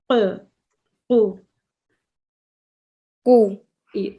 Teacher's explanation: Can you see your tongue is now squeezing at the back of your throat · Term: qaf